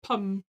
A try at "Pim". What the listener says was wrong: In New Zealand, we'd pronounce it pum, but it's P-I-M. Pim. Not Pam. Not Pan. Not Pamb.